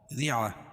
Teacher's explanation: ریعہ، را باریک ہوگی اور گول تا کو وقف کی حالت میں ہائے ساکنہ سے بدل